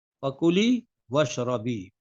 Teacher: اب ملا کر پڑھیں گے نا تو الف کے نیچے جو زیر ہے وہ حذف ہو جائے گا، واو سے جب ملائیں گے تو وہ اشربی نہیں پڑھیں گے بلکہ وشربی پڑھیں